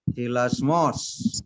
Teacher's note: The accent is on the last syllable. So when you pronounce it, hilasmos.